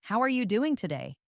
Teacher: Notice how the voice typically rises a bit at the end and how the word doing is often stressed.